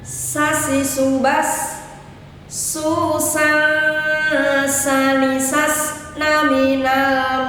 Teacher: Huruf sin sekarang adalah berdesis layaknya kita mengucapkan huruf S biasa